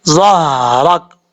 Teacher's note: تو اس ہا کو پڑھتے ہوئے آواز سینے کی طرف سے آئے گی